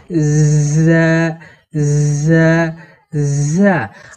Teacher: এই ঝা হরফকে জিহুবার আগা এবং সামনের নিচের দুই দাঁতের গোড়া একসঙ্গে লাগিয়ে এই ঝা হরফকে শীর্ষসহ পড়তে হয়